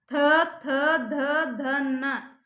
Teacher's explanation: ನಾಲಿಗೆ ಬಂದು ಹಲ್ಲಿಗೆ ಬಡಿತೈತಿ ಅದಕ್ಕೋಸ್ಕರ ಅದನ್ನ ಹಲ್ಲಿಗೆ ದಂತ ಅಂತ ಕರೀತೀವಿ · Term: ದಂತ ಅಕ್ಷರಗಳು